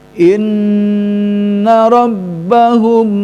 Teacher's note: rbahum mim bertemu sama ba ya mim sukun bertemu sama ba hanya mim bersukun sama ba yang harus ditahan karena masuk kepada hukum Ikhfa Syafawi